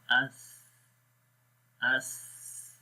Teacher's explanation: Sa, it has hums quality, again the flowing of air, the airflow in the mouth, and we say ath with the soft sound.